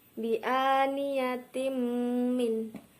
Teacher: Bi'aniyatim min, kasroh tanwin bertemu dengan huruf mim yaitu idgham bi ghunna, dibaca kasroh tanwin lebur ke dalam huruf mim dan mendengung